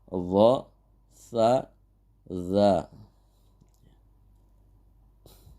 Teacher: makhraj yang ke-10 dari al-lisan, pengucapan al-lisan ini yaitu ujung lidah dan ujung gigi seri atas, keluar huruf dod, kemudian sa dan zal, dibaca dha, sa, za.